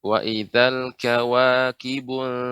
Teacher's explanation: Jadi dia tidak kibun, tidak dibaca tebal ya, tapi dibaca dengan tipis dan ikhfa ya.